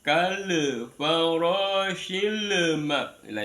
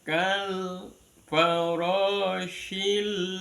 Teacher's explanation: kalau ada lam di sukun jangan dilepas ya